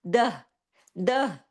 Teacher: جب اس پر عارضی سکون کیا جائے تو تا مربوطہ ہا کی آواز میں بدل جاتی ہے، یہ تا نہیں رہتی، یہ ہا میں بدل جاتی ہے، دہ، دہ، ٹھیک ہے؟